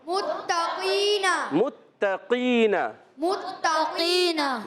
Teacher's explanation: قاف ادا ہوتا ہے زبان کی جڑ اور تالو کے نرم حصے سے · تا ادا ہوتا ہے زبان کا سرا اوپر کے دانتوں کی جڑوں سے · تو یہاں پر تا کو باریک رکھنا ہے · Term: تا کا مخرج